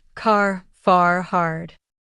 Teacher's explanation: in American English, we often pronounce the R clearly at the end of words, while in British English, it may be softer or even silent. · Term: clear R sound